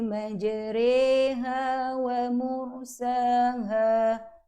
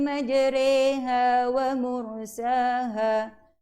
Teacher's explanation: Cara bacaan ialah membunyikan huruf ra di antara baris atas dengan baris bawah seakan sebutan re